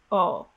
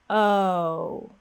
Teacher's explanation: in many other languages the o sound doesn't have gliding of the lips instead your lips may stay still